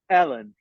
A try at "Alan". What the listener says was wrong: It's so funny because the way you're saying it, it sounds like Ellen. Alan, yes.